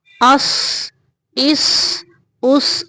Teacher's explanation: حمزہ زبر صاد اس، حمزہ زیر صاد اس، حمزہ پیش صاد اس، اس اس اس۔ آواز کو موٹا کر کے نکالیں گے، صاد موٹا حرف ہے۔